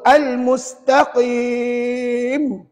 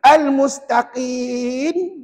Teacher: nak sebut huruf mim kena tutup tutup bibir tapi kita tak perasan Hari Tu kita baca Nun pula al-mustaqin · jadi Nun tak tutup bibir